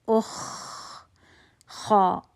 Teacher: خا, اس کو صحیح مخرج سے نکالنا ہے, اقصل آپ کے حلق سے, ادنی الحلق سے, حلق کے پاس. اخ, خا, ہوا چل رہی ہے, آواز چل رہی ہے, ہوا محسوس ہو رہی ہے.